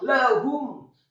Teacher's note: Lamnya dibaca tipis, fathah 1 harokat. · Kemudian haknya dibaca taukhim, menggema di dada marfu' atau dhammah 1 harokat. Dan membaca huruf mimnya disukunkan.